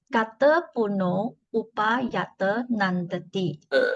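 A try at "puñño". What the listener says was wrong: Do you pronounce it as punno or punyo? Punyo. Not punno. Now, you don't see the usual N here.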